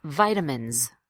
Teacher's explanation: the S at the end is pronounced as a buzzing Z. You'll feel buzzing in your throat.